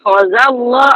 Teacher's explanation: Allah lafzul jalalah tafkhim dibaca tebalkan sebab sebelumnya bari atas.